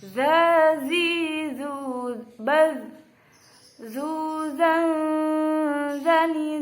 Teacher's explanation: Huruf zal ini tempatnya, makhrajnya yaitu berada di ujung lidah dan ujung dua gigi seri pertama atas.